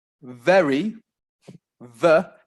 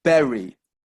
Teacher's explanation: you see the difference the lips are coming close together but you've got your teeth coming to your bottom lip the lips don't come together · when you're making the ver sound then you should see that it's your teeth coming into contact with your bottom lip your lips shouldn't be pressed together · our lips don't touch it's the teeth and the lips the that's why there's a difference between very ver and berry